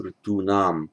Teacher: A t intervenes here, so the n remains a dental.